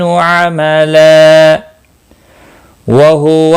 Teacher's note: ملانے کی صورت میں ادغام باگنہ ہوگا کیونکہ تنوین کے بعد حروف یرملون کا واو آیا ہے۔